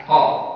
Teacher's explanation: qaf dia di belakang. Ya, berbeda dengan huruf ka.